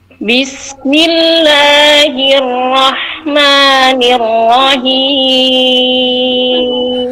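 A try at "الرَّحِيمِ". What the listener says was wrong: Nirrahim. Hi-nya kurang bersih tadi, hampir masuk ke H ya.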